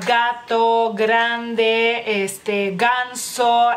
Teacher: es una consonante sonora se pronuncia digamos que como en la garganta por así decirlo y en el paladar blando